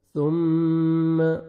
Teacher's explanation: ثم میم مشدد ہے، غنہ کریں گے، نوز میں ساؤنڈ لے کے جائیں گے، اور ثا کو نرمی سے ادا کریں گے، سین میں ساؤنڈ مکس نہیں ہونا چاہیے